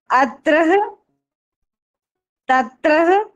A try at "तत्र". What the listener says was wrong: तत्र विसर्ग नहीं है। तत्र